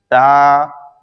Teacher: تا زبان کی نوک اوپر کے دانتوں کی جڑ سے ادا ہوتا ہے